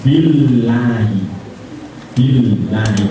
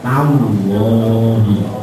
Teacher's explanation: tempat lidah masih tetap seperti Billahi tallahi hanya dimoncongkan suaranya ditebalkan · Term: lam tebal